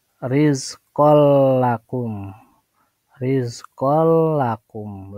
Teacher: Idgham bila gunnah itu tanpa berdengung.